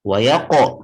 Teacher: qalqalah sugro pada qaf yang berbaris sukun. Wa yaqo, pantulkan seperti itu.